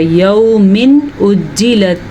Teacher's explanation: تنوین کے بعد حمزہ حروف حلقی میں سے آ گیا ہے تو یہاں پہ اظہار کا قاعدہ ہوگا